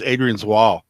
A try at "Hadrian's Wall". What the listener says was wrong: Adrian's Wall. Hadrian. Hadrian. You said Adrian. We all heard silent H.